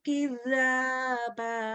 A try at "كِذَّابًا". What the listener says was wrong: kurang nyamber tasdidnya. Kidzaba. Kurang nyamber, kurang neken. Kurang nahan.